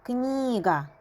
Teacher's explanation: N burada yumuşalır. Çünkü N'dan sonra i saiti yazılıb.